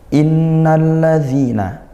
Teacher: inna nun bertasydid kita baca ghunah didengungkan ya